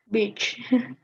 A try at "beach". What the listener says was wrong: Long E, quite long. Longer. Beach. Don't pronounce it short. longer E, a longer E, right? beach, right?